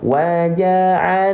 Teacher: karena ketemu sama alif lam syamsiyah maka nanya enggak dibacaan panjang